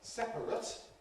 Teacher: the adjective is ‘separate’ /ˈsepərət/, with /ət/ or some people /ɪt/, which is therefore a candidate for ‘compression’